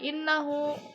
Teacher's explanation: Karena ha domirnya itu diapit oleh huruf hidup dan setelahnya itu bukan hamzah gitu. Dibaca panjangnya dua harakat aja. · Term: mad silah qasirah